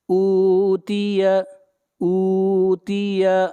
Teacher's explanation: حمزہ کو کھینچ کر پڑھیں گے ایک الف کے برابر، یہاں پر واو مدہ ہے